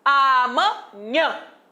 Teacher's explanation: Professor, aquele tio nasalizou a vogal A. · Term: nasalização